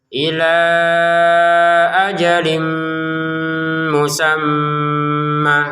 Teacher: Kemudian untuk pertemuan 'ajalin' mim, kita memasukkan tanwin ke dalam mim. Disertai dengan suara sengau (ghunnah).